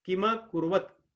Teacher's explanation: जैसे कीमा कुर्वत, माता जी मैं कीमा कुर्वत इसलिए कह रहा था, जितना समय की कहेंगे उतना इसमें म कहेंगे, क्योंकि दोनों ह्रस्व हैं। अगर की के लिए 1 सेकंड लगा रहे हो तो म भी 1 सेकंड ही लगेगा। किम नहीं कह सकते, किम कुर्वत नहीं कह सकते, कीमा कुर्वत।